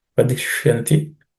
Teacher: The ish is cerebral ish.